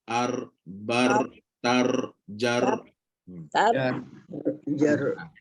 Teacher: huruf r ni bila tebal tak ada kaitan dengan bibir dan tak perlu muncung pun